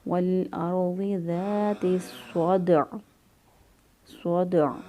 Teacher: دال جو ہے یہ حروف قلقلہ میں سے ہے، قلقلہ کریں گے، اور عین جو ہے وہ وقف کی صورت میں ساکن ہو جائے گا۔